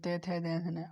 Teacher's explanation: तो ये दंत की सहायता से बोले जाते हैं, दंत बोलते हैं ते थे दे धे।